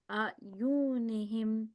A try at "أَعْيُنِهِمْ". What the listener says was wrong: This sounded a little bit too long. So remember, this is a simple kasra. It is a short vowel, fatha dhamma kasra. So they are prolonged for 1 second only. A'yunihim.